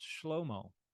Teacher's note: Normally that would be like a final ah sound. But here, because of how old it is, this is a final O sound.